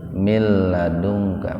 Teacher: Wahab lana mantabi alif, mil ladungka, mil idgham bilang guna. Nun mati ketemu dengan lam. Jadi nunnya dimasukkan ke lam tanpa mendengung. Biasanya di atas lam sudah dibubuhi tasdid.